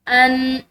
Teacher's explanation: وما انزل اللہ، ان، یہاں پر نون ساکن ہے اور نون ساکن کے بعد زا حروف اخفا میں سے ہے، تو یہاں پر اس نون ساکن پر ہم اخفا کریں گے